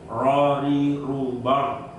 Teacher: roh yang dibaca tebal tidak melibatkan bibir yang bawah diangkat ke atas itu dengan cara roh, rori rubar, ya kan gitu, rori rubar, bau, kan enggak seperti kita, rori rubau, bau.